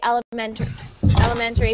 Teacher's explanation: We don't really pronounce the T very strongly a lot of the time. Yeah. Like, for example, the word elementary school. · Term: almost like a d